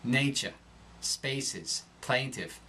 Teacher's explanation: The long A darkens